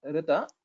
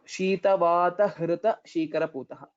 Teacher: pronunciation of hrita, it's not rita, hrita, that should come from uras